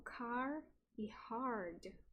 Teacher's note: Esse inglês é não rótico, o R não é pronunciado em pósvocálica · Que tem a característica rótica na variedade General American. Nesta variedade do Received Pronunciation, acontece um alongamento da vogal, e o rótico ele não aparece como característica rótica, né? Ele não aparece a coloração rótica.